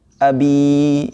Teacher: Sukun termasuk salah satu huruf Madya dan situ memenuhi syarat bahwa jika sebelum Ya Sukun itu berharakat kasrah maka dihukumi Mad Thobi'i jadi dibaca panjang dua harakat · Jadi dibaca panjang 2 harokat. Abi ya, 2 ketukan. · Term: mad tabi'i